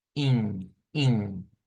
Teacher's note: Es una I nasalizada. Por lo tanto, va a sonar como in, in. Parece que se le agregara una N al final, pero es la nasalización.